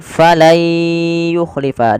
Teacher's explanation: Diganti suara nunnya menjadi suara ya. Kemudian langkah kedua ditahan dengan gunnah.